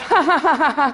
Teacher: you find nasality in posed laughter, that kind of ha-ha-ha-ha sound, that you never get, you could not do if you were laughing involuntarily.